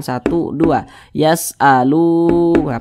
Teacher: panjangnya itu dua harakat atau kira-kira sepanjang dua ketukan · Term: Mad thi'i